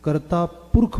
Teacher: ਕਰਤਾ ਪੁਰਖੂ ਨਹੀਂ ਬੋਲਦੇ, ਕਰਤਾ ਪੁਰਖ ਬੋਲਦੇ ਹਾਂ। ਸੋ ਅਸੀਂ ਲਾਸਟ ਵਾਲੀਆਂ ਔਂਕੜਾਂ ਛੱਡ ਰਹੇ ਹਾਂ।